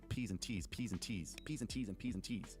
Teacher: the plosives, like your P's and your T's, things that have just gusts of wind hitting your microphone. It stops that from happening.